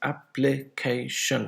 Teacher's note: application four syllables and where is the word stress on the third one